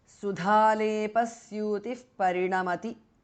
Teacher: Dha is mahapranah. Visarga changes to upadhmaniya.